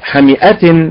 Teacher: النبر على الاداء المستقيم على حركه الحاء